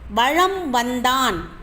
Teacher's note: மகர மெய்யானது தனக்குரிய அரை மாத்திரை அளவிலிருந்து குறைந்து 1/4 மாத்திரை அளவில் ஒலிக்கிறது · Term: மகர குறுக்கம்